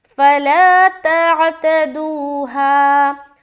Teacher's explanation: الف مدہ کرنا ہے اور فا کو جلد ادا کرنا ہے۔